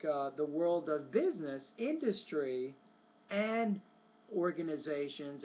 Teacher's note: Now, when you give those three items in a row, it's more like the world of business, industry, and organizations. And when you get to the third item in the series of items, the tone needs to drop on that one.